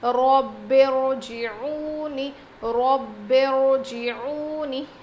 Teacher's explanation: را ساکنہ اور زیر کے بیچ میں الف جیسی دیوار آ جائے، یعنی الف آ جائے. تو اس حال میں ہم اس را ساکنہ کو باریک پڑھنے کے بجائے موٹا پڑھیں گے